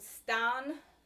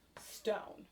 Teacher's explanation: the a sound of old english often becomes an o sound in middle english